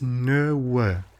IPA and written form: nɵwə (nö-wë)